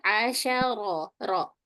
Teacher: Asyara, ro-nya tidak masuk hidung.